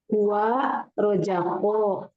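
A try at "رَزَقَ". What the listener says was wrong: Coba Zainya jangan terbaca jim, zai, roza. Hati-hati jangan roja, tapi roza. Zai, roza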